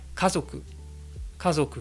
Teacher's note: avec un accent qui va retomber dès le deuxième mola, donc qui est haut sur le premier, puis bas sur le deuxième, et qui reste bas tout le long du mot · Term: Atama Daka